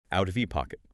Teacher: Here we get that flap T again, because the T in out is between 2 vowel sounds, ow and ha.